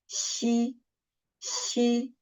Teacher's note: when xi, the third one, xi is pronounced, the surface of the tongue approaches the hard palate without reaching it, leaving a gap in between. So there is a gap.